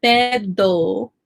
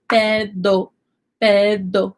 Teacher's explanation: It's close to a D, but don't mess it up and say pedo, because the D in Spanish, my tongue is touching the back of my teeth